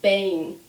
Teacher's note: when we have the M at the end of a word, we do not close our lips.